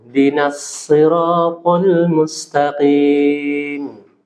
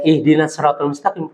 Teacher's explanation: Kalau kita wasol itu hamzahnya itu nggak dibaca. Karena dia ada hamzah wasolnya di hamzahnya itu. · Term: hamzah wasal